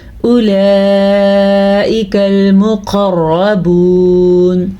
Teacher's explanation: قاف کو موٹا پڑھنا ہے کیونکہ قاف حروف مستعلیہ میں سے ہے، اور را کو پر پڑھنا ہے، را ہم کے اوپر زبر ہے۔